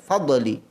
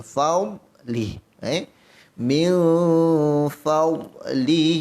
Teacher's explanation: Sedangkan dad ini tidak ada sifat qalqalah.